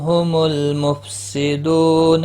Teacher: میم ساکن کے بعد ہا آیا ہے اظہار شفی ہوگا